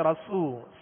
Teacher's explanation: را پر زبر ہے لہذا را کو پر پڑھیں گے, اور آگے وہ مدہ ہے رسو, سین کو سیٹی کی آواز میں پڑھیں گے مگر باریک